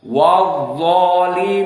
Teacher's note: Di saat kita membaca wadzalimina, maka zo di sini lisan kita di atas. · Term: sifat isti'la